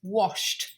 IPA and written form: wɒʃt (washed)